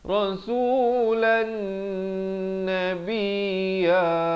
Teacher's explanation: Di sini idgham bi gunnah. Tanwin bertemu nun, dengung 2 harakat